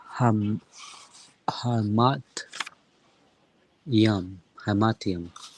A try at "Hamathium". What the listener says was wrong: Not quite Hamatium. This one here would be the last letter of the Hebrew alphabet. Hamathium. Hamathium, right?